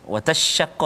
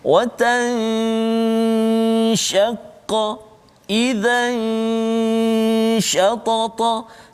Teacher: cuma ada dengung dulu ikhfa tu, jangan terus pergi shin jadi idgham pula